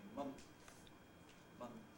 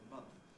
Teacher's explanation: For example, in the word month, you may sometimes hear people pronounce it with a plosive between the N and the th, that is saying month, month, rather than month.